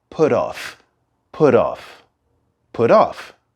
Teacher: we have a slight R sound in between the words put and off